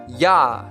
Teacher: the body of the tongue is raised to the hard palate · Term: palatal